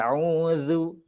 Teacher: ujung lidah bertemu dengan ujung gigi seri bagian atas